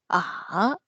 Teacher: the first half is like toned down a little bit and then the second half is tone up a little bit · the third tone is like 2-1-4